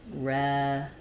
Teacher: we're going to have a very reduced vowel in that second syllable.